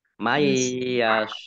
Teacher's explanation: huruf ya bacaan Idgham bunah masuk dengan mendengung yaitu mendengung ya Nun sukunnya tidak dibaca langsung masuk ke huruf ya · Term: idgham bi gunnah